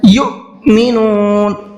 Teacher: حمزہ ساکن ہے اور حمزہ ساکن کے پڑھنے میں جھٹکا ہوتا ہے